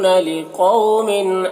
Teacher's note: قو، قاف کو پر پڑھیں گے، واو لین ہے، اسے نرم آواز کے ساتھ جلد پڑھیں گے